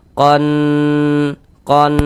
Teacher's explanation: di bagian qon itu soalnya kita tahan kita panjangkan sejenak kira-kira sepanjang dua harakat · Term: ghunah musyaddadah